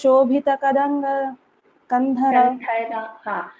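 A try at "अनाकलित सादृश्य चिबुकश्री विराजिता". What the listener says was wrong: You are splitting the words and chanting. Pronunciation of the letters is correct, but you have to chant it together. I will chant once, you can chant after me. Anakalita sadrushya chibukashri virajita. So after this sadrushya and chibuka, between these two, there is no gap, okay? Anakalita sadrushya chibukashri virajita.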